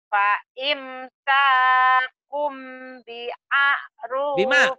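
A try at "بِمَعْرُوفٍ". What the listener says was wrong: Bima. Makanya ketinggalan. Bima'rufin.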